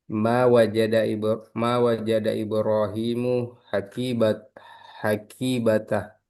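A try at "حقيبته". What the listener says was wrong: Hmm, yang jelas. Hakibatahu. Yang jelas. Jangan tah. Tahu. Yang jelas saja.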